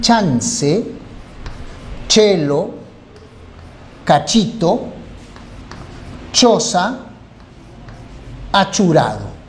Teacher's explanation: Este es un sonido palatal, es decir, se forma cuando la lengua choca con el paladar y se representa con el dígrafo en chance, chelo, cachito, choza, achurado.